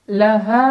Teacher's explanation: Mad Thobi'i kena ada Alif sebelumnya fathah cara bacanya dipanjangkan dua harakat